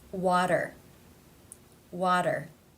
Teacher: this t comes between two vowel sounds therefore it is pronounced as the flap tap t or in other words the d sound